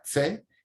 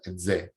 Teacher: El elemento sonoro se pronuncia exactamente igual, pero haciendo que vibren las cuerdas vocales, de manera que es un sonido con una sonoridad que no tiene el sordo.